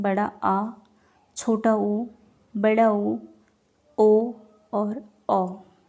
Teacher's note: वे स्वर जिनका उच्चारण करते समय जीभ का पश्च भाग क्रियाशील होता है उन्हें हम पश्च स्वर कहते हैं। पश्च स्वर में क्या कौन कौन से आते हैं?